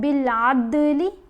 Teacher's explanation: دال کی آواز کو ہلا کر پڑھا جائے گا، اور یہاں با ساکن ہے، وقف بھی کر رہے ہیں تو یہاں بھی کلکلا ہوگا فَلْيَكْتُبْ۔